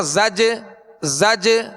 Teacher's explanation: یہ جو آواز لوٹ رہی نا زج زج، یہ جنبش ہو رہی ہے آواز میں، زج جیم کی ادائیگی میں مخرج میں جنبش ہو رہی ہے، جو آواز لوٹتی ہوئی آ رہی ہے اسے قلقلہ کہتے ہیں